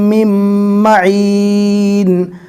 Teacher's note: نون نہیں پڑھا جائے گا، تشدید والی میم کو ڈائریکٹ تشدید والی میم سے ملا دیا جائے گا